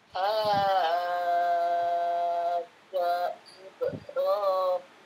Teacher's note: Sekarang ja-nya dengan i Ibrahim sambungkan, jangan diputus. Kepanjangan, ja-nya enggak panjang.